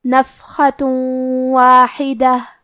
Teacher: کلمت واحدہ، واو حروف الادغام بغنہ میں سے ہے، اور ادغام کا معنی ہے حرف کو حرف میں داخل کرنا، تو ہم یہ تنوین کو واو میں ملا کے غنہ اور تشدید کے ساتھ یہ حکم کو ادا کریں گے · کلمت واحدہ میں حرف الحا ہے، اور حا کی ادائیگی حلق کے درمیان والے حصے سے ہے. آخری میں تا مدورہ ہے، ہم یہ کلمہ پہ رکیں گے تو اس پہ ہا سے رکیں گے.